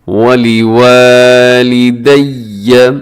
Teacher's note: واو کو لمبا کرنا ہے کیونکہ اس کے بعد الف ہے